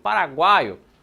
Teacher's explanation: Nessa guai, professor, o que a gente encontrou? A gente encontrou uma semivogal, uma vogal e uma outra semivogal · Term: tritongo